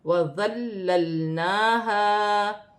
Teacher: لام مشدد ہے، لام کو ذال کے ساتھ ملا کر پڑھا جائے گا، ذال نرمی والا حرف ہے، پھر ایک لام ساکن ہے، ساکن لام کو مشدد لام کے ساتھ ملا کر پڑھا جائے گا